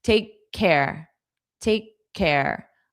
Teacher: you get your mouth in the K position, but don't push out the sound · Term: unvoiced K